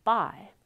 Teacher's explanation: the lips are closed that's the stop closure and the vocal folds start vibrating for the voiced then the lips open and the stop is released and the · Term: voiced stop